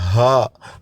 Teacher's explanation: ہا حلق کا آخری حصہ ہے. ہا منہ صحیح طرح کھول کے ادا ہوگا